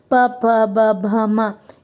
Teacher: ಹೋಸ್ಟ್ ಹೋಸ್ಟ್ ಅಂದ್ರೆ ತುಟಿ ತುಟಿಯಿಂದ ಯಾವ ಪದಗಳನ್ನ ಹೇಳ್ತೀವಿ. ಪಬ ಭ ಮ ಇವೆಲ್ಲ ತುಟಿಯಿಂದ ಉಚ್ಚಾರ ಮಾಡುವಂತವು